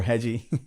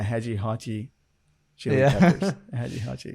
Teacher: the r becomes like a h right uh at least in some accents